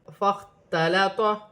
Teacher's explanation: خوا ساکن ہے، حروف حلقی میں سے ہے، حلق سے ادا کیا جائے گا